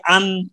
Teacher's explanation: زبان کا سرا اور اوپر کا تالو ان سے نون نکلتا ہے